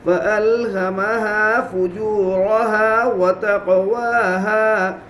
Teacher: قاف میں قلقلہ ہوگا اس لیے کہ قاف قلقلہ کے 5 حروف میں سے ہے